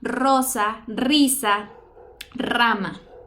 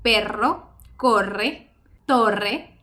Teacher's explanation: sus características son que tiene una vibración, salida de aire, y el punto de articulación, que es decir, ¿dónde se coloca tu lengua? Pues es detrás de los dientes, en los alvéolos, en tu paladar, bueno, entre tu paladar y tus dientes. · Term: vibrante múltiple